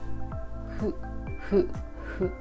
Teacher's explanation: Hu is written as fu, but it's not the f sound. Don't make this fricative sound. It's hu. It's like blowing a candle very gently.